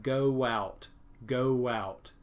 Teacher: The next kind is intrusion. With intrusion, we have a sound that intrudes or goes in between these letters, and that sound in this word is wa.